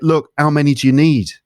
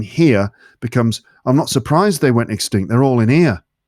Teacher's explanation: So pronunciation point number 1, H dropping. This is just not pronouncing H sounds.